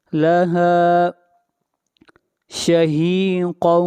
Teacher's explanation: قاف حروف مستعلیہ میں سے ہے، قاف کو موٹا پڑھا جائے گا۔ شہیقا، یہاں پر تنوین کے بعد حروف یرملون میں سے واو ہے، ادغام مع الغنہ ہوگا۔